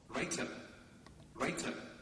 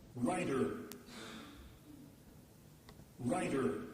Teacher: that's an unvoiced or voiceless pronunciation and the same word writer writer with a voice T in in the middle